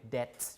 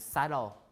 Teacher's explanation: nowadays we pronounce it debt without the B doubt without the B and subtle without the B